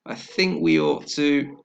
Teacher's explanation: E and or. So we're going to add y to make that connection smoother. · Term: y sound